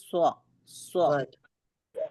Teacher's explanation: سواد کی جب ہم ادائیگی کرتے ہیں تو زبان کی نوک جو ہے ہمارے نیچے کے 2 دانتوں کی جڑ میں جا کے لگتی ہے، تو آواز آتی ہے سو سو، ٹھیک ہے.